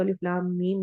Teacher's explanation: ये शद आ रही है ना, आप देखेंगे कुरान में, यहाँ पर तो लिखने में हमारे राइटिंग में शद नहीं लिखी गई, लेकिन आप कुरान में जब भी पढ़ते हैं हरूफ मुक़त्तात को तो अलिफ लाम मीम, मीम के ऊपर शद आ रही होती है। और ला को लंबा करते हुए हम अलिफ मद्दा कर रहे होते हैं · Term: मद लाजिम हरफी मुस्तक़ल